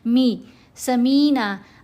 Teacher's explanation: بہت سے لوگ یہاں کیا غلطی کرتے ہیں، سمینا پڑھتے ہیں، می سمینا، آئین کی آواز کو سکپ کر جاتے ہیں